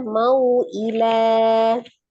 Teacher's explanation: Ilan awalnya lan fathah tanwin yang diwakafkan, maka dia menjadi fathah 2 harakat, menjadi mad iwad ya. Mad yang terjadi ketika wakaf pada huruf yang berharokat fathah tanwin dibacanya berubah menjadi fathah 2 harakat.